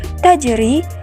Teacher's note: sukun berada di tengah ayat sehingga ketika kita membaca kalimat tajri pantulannya tidak terlalu kita beratkan karena ia termasuk Qalqalah Sugra